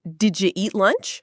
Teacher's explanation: The did you became did ya.